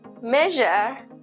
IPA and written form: ˈmeʒ.ɚ (measure)